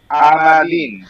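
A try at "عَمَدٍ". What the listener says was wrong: আমাদিন, আতে একটু চাপ দিন, আমাদিন, হ্যাঁ, আইনাবিন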